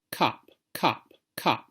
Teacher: In the South, they're going to be two different vowels. One is strut, and one is foot and they won't sound the same.